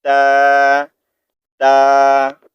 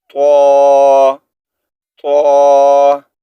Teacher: ता को हमने बारीक पढ़ना है और त्वा को मोटा पढ़ना है। ये देखें, ता ता, और त्वा का साउंड जो है हमने मोटा पढ़ना है, तो तो, ठीक है।